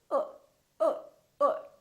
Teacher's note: the neutral sound the lips are very slightly rounded